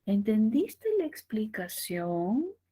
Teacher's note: siente como sube un poquito al final el tono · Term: tono ascendente